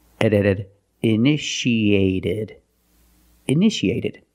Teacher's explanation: The second T is between vowels so we pronounce it like a fast D